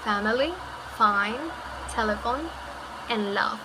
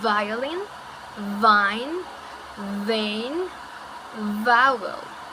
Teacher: both sounds are produced in the same way, putting your upper teeth and your lower lips together. The difference between the sound is that F is voiceless and V is voice.